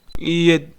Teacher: The T in yet is soft D.